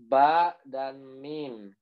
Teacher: ba dan mim itu makrojnya sama, cuma beda sifatnya aja.